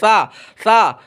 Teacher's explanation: जुबान को दांत के बाहर निकालना है और ऊपर के दांत में लगाना है · ज़ुबान की नोक, ज़ुबान की नोक ऊपर के सामने वाले, ज़ुबान की नोक ऊपर के सामने वाले दोनों दांतों की नोक से, ज़ुबान की भी नोक और दांत की भी नोक, दोनों दांतों की नोक से मिलकर सा अदा होता है